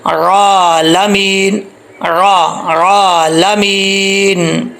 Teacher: وہ آئین ہے، اس کو حمزہ نہیں پڑھنا، پتہ نہیں چلا کہ آئین پڑھی جا رہی ہے، حمزہ پڑھا جا رہا ہے، کلیئر کر کے پڑھنا ہے۔